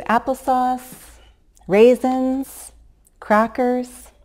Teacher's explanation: you could use Rising intonation the whole time and you would do that because there could be or there are other items or other options